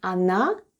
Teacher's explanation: The first letter is O and it's unstressed and is pronounced as A. Then goes N and A.